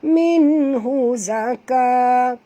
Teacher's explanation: Nun mati bertemu ha, tak boleh dengung, izhar halqi.